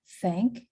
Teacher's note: this consonant is pronounced without vocal fold vibration and the tongue goes behind the upper teeth an air passes through to produce a hissing fricative noise